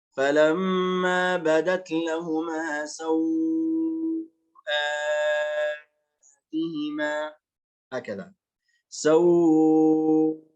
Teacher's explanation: توسط الواو، توسط اللين، وتوسط البدل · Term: توسط وتوسط